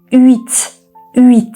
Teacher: H sesini hiçbir şekilde duymayacağız. Yani hüt değil.